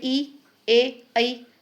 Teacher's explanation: अग्रस्वर का अर्थ होता है कि जिसके उच्चारण के समय जीभ का अगला हिस्सा मूवमेंट करता है, यानी कि ऊपर उठता है। जैसे कि आप बोल के देखेंगे, है ना, बोले ई, ए, ऐ, तो ये जो जीभ का आगे का हिस्सा है ये मूवमेंट कर रहा है।